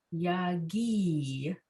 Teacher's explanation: the emphasis is on that syllable the ghee syllable yagi